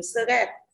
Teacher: Động từ thì các bạn có âm tiết là rơi tiết thứ hai, mà hơn nữa suggest thì có âm ơ vừa bên trên cũng như support. Suggest các bạn để ý cái s i u nhá, đọc là ơ đúng không ạ? Thì ơ không nhận trọng âm